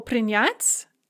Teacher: in the infinitive the stress is on the yah and we keep this nyat's form in the past tense but